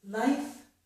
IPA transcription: laɪf